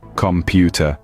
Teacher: the second syllable pu is stressed